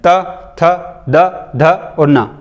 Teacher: त वर्ग पूरा बोलोगे तो दांत आपस में टकराएंगे